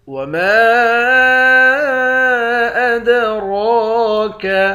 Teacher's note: میم کے بعد الف ہے، اس الف پر مد ہے۔ اس مد کو 3 الف کے مقدار کھینچ کر پڑھیں گے۔ · دال حروف قلقلہ میں سے ہے، یہاں قلقلہ کریں گے